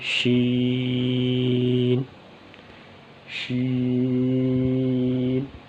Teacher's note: شین کی ادائیگی کی جگہ وہ زبان کا درمیان اور اس کے بالمقابل اوپر کا تالو